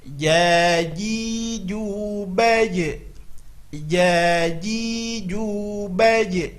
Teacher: Okey, di sini perlu diperhatikan makhrajnya adalah tengah lidah ke tengah-tengah langit atas. Kebiasaan kita ujung lidah ke langit-langit atas, salah. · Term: huruf jim